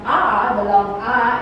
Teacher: or the sound ah at the very bottom it means that the position of the tongue is low at the very low part and the raising of the mouth is open